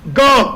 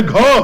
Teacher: लेकिन ग जो है अल्प प्राण है ग अल्प प्राण है और घ महाप्राण है